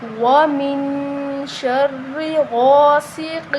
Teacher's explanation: غین کو موٹا پڑھیں گے، غین کے آگے الف مدہ ہے تو اس کو ایک الف کے برابر لمبا کر کے پڑھیں گے۔ · سین سیٹی والا حروف ہے تو سین کی آواز آنی چاہیے۔